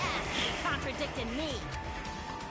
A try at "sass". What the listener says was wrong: Did you mean to say sass? I think you left out an S.